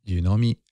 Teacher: yeah it goes up at the end